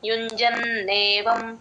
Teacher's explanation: జ కి నా ని జాయిన్ చేసుకొని చెప్పాలి నా కింద నా వత్తు వినపడాలి